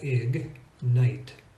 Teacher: reason why it's an exception is it's easy to pronounce because the G is in one syllable and the N is in the next syllable